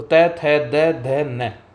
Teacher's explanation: ये हमारे दांत से टच करके उत्पन्न होते हैं। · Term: त वर्ग